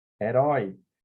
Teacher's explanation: herói então ao mesmo tempo ele é decrescente e oral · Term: ditongo decrescente